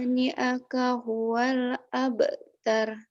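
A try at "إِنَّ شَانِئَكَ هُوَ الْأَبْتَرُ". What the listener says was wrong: Itu sudah benar bacanya. Cuman itu tadi ya penekanannya nih.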